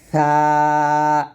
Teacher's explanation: আগাটা কোন ভাবেই মানে কোন ভাবে আপনি নিচের দাঁতে লাগাবেন না এটা উপরের দাঁতের আগা লাগাবেন পাতলা করে